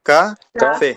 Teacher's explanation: se carga la voz en la última sílaba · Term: aguda